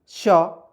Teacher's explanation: इसको पढ़ते हैं मूर्धन्य श, ठीक है, क्योंकि इसका साउंड मूर्धा से आता है